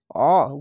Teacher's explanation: আইনটিকে আলিফের মতো উচ্চারণ করবে না, আইনকে আইন, আইন যাবার অ, গলা চিপে এবং মোটা করে পড়বেন।